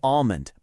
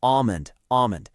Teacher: That L is completely silent. A lot of people say almond, but it's really almond, almond.